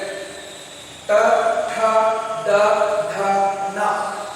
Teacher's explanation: ನಾಲಿಗೆಯನ್ನ ಮೇಲಕ್ಕೆ ಟಚ್ ಮಾಡಿದ್ರೆ ಏನ್ ಭಾಗ ಇದನ್ನ ಅಂಗಳು ಅಂತ ಕರೀತೀವಿ. ಈ 5 ಅಕ್ಷರಗಳು ಅಂಗಳಿಗೆ ನಾಲಿಗೆ ಸ್ಪರ್ಶವಾಗುವ ಮೂಲಕ ಉಚ್ಚಾರಣೆ ಆಗುತ್ತವೆ. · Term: ಮೂರ್ಧ